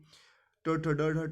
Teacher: ट ठ ड ढ ट वर्ग है, मूर्धन्य बोलते हैं